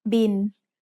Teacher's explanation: It's the word bill, but we read it in Thai as bin. Thai doesn't naturally have the L sound at the end of a syllable, so it changes to sound like the letter N.